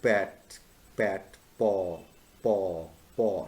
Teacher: i am using my two lips the upper lip and the lower lip back pat ball paw paw so the two lips are involved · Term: bilabial sounds